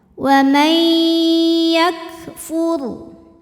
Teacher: ada hukum idgham bi gunnah karena ada nun sukun menghadapi huruf ya, maka nunnya dileburkan ke ya disertai dengung